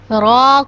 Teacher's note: جب ہماری زبان فولڈ ہوگی اور اس کا کچھ بیک حصہ ہمارے اگلے والے 4 دانتوں کے مسوڑوں سے لگے گا تو را ادا ہوگا